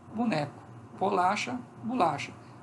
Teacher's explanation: este O assimila o traço da labialidade do B, se torna mais labial do que ele já é. Quando ele se torna mais labial, ele se torna uma vogal U.